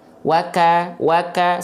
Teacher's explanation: hamsnya bukan mengalir nafasnya tapi hanya berupa percikan nafasnya ya jadi ketika teman-teman melafalkan Kaf nafasnya berupa percikan saja